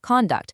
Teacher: Now, you have to be aware of the special rule for the word conduct because it actually changes based on how it's used. As a noun, the stress is at the front.